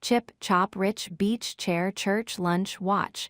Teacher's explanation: Notice how each word has that quick explosive ch burst at the beginning or in the middle of the word. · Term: ch sound